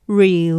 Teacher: 雖然最後嗰個音係高音嘅位，但係重音依然係第一個音節▁re▁嗰度嘅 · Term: 句末上升語調